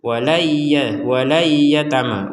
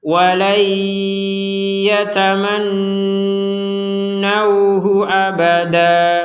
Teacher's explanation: Ini kan berarti tidak ada dengungan. Jadi kita jeda dulu 2 harokat untuk dengung. Walayya, jadi didengungkan dulu di rongga hidung.